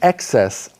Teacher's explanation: the emphasis for the noun is on the first syllable